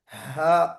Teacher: हमजा हा जो बिल्कुल आपके इब्तिदाई हलक से निकलता है